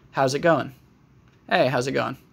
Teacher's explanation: you can change the NG sound in going and make it just an N sound.